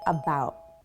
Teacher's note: T at the end of about so it sounds like about I don't close that t sound in my mouth